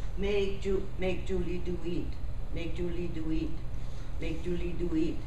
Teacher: they stress every word